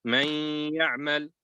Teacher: you're going to read with ghunna. You're going to hold the sound in the nasal cavity.